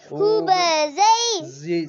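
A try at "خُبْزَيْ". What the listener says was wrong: سیٹی نہیں کریں. خوب زئی.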